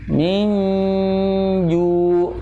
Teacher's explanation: At'amahum min ju' nun sukun bertemu dengan ja, hukumnya ikhfa, ya, ikhfa hakiki ya, dengan bacaan awsat